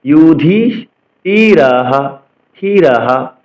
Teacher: তো ছন্দের গঠন অনুসারে অনুষ্ঠুপ ছন্দ হলে 1 থেকে 8 অক্ষরের পরে, ছন্দের গঠন অনুসারে অনুষ্ঠুপ ছন্দ হলে 8 অক্ষরের পরে শ্লোকের শেষে, লাইনের শেষে যদি বিসর্গ থাকে, তবে বিসর্গের জন্য হ উচ্চারণ করতে হয়, অর্থাৎ বিসর্গের পরিবর্তে আমাদের হ উচ্চারণ করতে হবে। এই ক্ষেত্রে বিসর্গের পূর্বের ব্যঞ্জনের সাথে কোনো শর্ট চিহ্ন বা কাট চিহ্ন থাকলে, তবে সেই শর্ট চিহ্ন এবং কাট চিহ্নকেও বিসর্গের সাথে জুড়ে, অর্থাৎ হর সাথে জুড়ে উচ্চারণ করতে হবে।